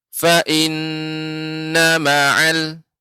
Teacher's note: tidak panjang maka dibaca cepat disambungkan ke huruf setelahnya